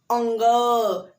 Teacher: तो देखिए कंठ से भी थोड़ा सा आवाज आ रहा है और नाक से भी आ रहा है, अंग अंग, तो कंठ और नसिका, इसीलिए अंग को कंठ और नसिका।